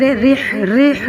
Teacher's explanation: را کے نیچے زیر رح رح یہ باریک پڑیں گے